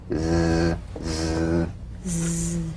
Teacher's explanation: The Z, cognate S, a voiced S sound fricative. The tongue rim should gently touch the upper gum ridge. Z, z. The tip in gentle contact with the hard palate.